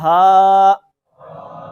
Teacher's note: ये सब का दुरुस्त होता है, इसको पढ़ें जरा, हा, ये सब का दुरुस्त है। इसको अदा करते वक्त हमारे सीने के अंदर एक गूंज सी पैदा होती है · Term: गोल हा